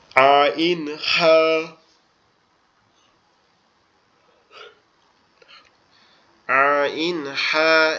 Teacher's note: এই হা এবং আইন একই জায়গার থেকে উচ্চারণ হয়, আমাদের কণ্ঠনালীর মধ্যখান হইতে একটু চাপা গলায়।